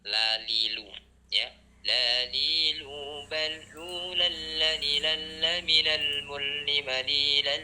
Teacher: Lam itu ketika suara kita mengalir dari kedua tepi lidah.